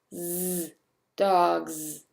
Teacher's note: And here, the alveolar sibilant fricative is voiced, as in z, dogs.